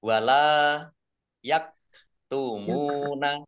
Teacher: lam fathah alif panjang 2 harokat. Kaf sukun yak tumuna. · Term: mat tobi'i